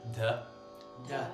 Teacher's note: the dental D, so your tongue is sticking forward a little bit more, and then that little extra puff of air